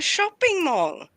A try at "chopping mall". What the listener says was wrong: No, not shopping, chopping. Like chopping, like what you do with a knife. Chopping mall. thinking of it from like the Svenska pronunciation, but it's being choopy choppy chorping. Chopping mall, not shopping mall.